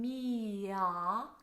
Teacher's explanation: M-E-E, me, a really pure E vowel. And then almost like there's a Y in between, mia. So you'll use the Y sound to transfer into the ah vowel. It's a nice forward ah, not a swallowed aw sound, like the word thought is a little bit darker.